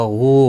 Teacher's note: واو مدہ ہے، ایک الف کی مقدار کے برابر کھینچ کر پڑھیں گے۔ غائن مستعلیہ بھی ہے، پر پڑھنا ہے۔